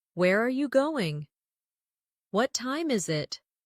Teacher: for information questions, those starting with who, what, when, where, why, how. The tone often falls at the end.